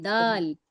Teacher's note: دال دال موٹا نہیں کریے اسے دال کہیے دال